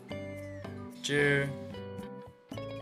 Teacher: Suara lidah ditekuk ke langit-langit mulut. Setelah lidah ditekuk ke langit-langit mulut, lafalkan konsonan Z. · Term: ZH